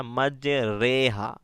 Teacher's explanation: ایمالا والی راہ ہے، اس وجہ سے یہاں پر مج ری نہیں بلکہ مج رے ہا پڑھنا ہے